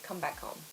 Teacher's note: it's quite common to make the H sound quite soft